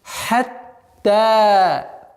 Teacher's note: Удваиваем звук та, а потом ударение в размере двух огласовок.